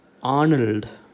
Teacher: Okay, they pronounce this name as Arnold because they give primary stress to the first syllable